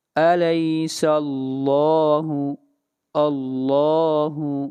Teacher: لفظ اللہ کو موٹا پڑھا جائے گا، اس لیے کہ لفظ اللہ سے پہلے فتحہ ہے، زبر ہے. أَلَيْسَ اللَّهُ بِأَحْكَمِ الْحَاكِمِينَ.